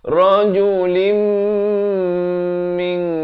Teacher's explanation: Di sini sekali lagi idgham bi gunnah. Asalnya rajulin, tapi bila datang mim terus masuk beserta dengung 2 harakat.